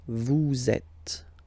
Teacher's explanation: vous is ending with S, and then you tend to make a little link between them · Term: liaison